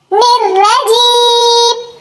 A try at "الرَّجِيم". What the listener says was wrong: Nirrajim. Nirrajim. There is no wow. We will pronounce it as nirra. Nirra. Nirrajim. Nirrajim.